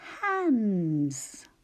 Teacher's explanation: when we add suffix s it does sound a bit like Z